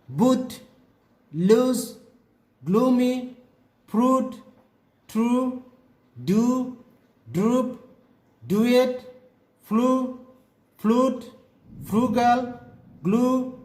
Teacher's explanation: It arises from O, UI, UE and O vowels. Tongue position high back and lip shape rounded. To produce the sound, put your tongue high and at the back position of your mouth and push your lips ahead with stress as you are going to kiss someone. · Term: oo sound